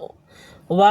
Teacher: वकारस्य मतलब होता है व य र ल व होता है ना वही व का उच्चारण स्थान कहां है दंत और ओष्ठ से व का व बोलने पर दंत और ओष्ठ में स्पर्श होता है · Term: दंतोष्ठम